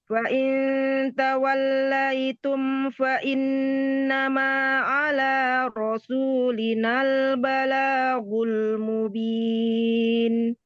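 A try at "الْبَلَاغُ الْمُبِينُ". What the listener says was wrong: Pakai ghoin, jangan pakai g. Gul.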